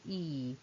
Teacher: It is close, and it is front, and our lips are slightly spread. So we can describe E as a long, close, front vowel with slightly spread lips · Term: long vowel E